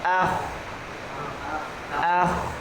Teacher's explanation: Kalau kho ah, di samping dia ngorok, dia juga tebal.